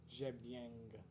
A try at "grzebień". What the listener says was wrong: There's no G. Grzebień. Grze.